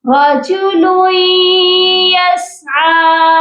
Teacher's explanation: بہت سے لوگ یہاں پر مسٹیک یہی کرتے ہیں کہ لام کو یا کے ساتھ سختی سے ملاتے ہیں. یہاں پر ہم نے سختی سے نہیں ملانا، یہاں ہم غنہ کر کے ملائیں گے لام کو یا کے ساتھ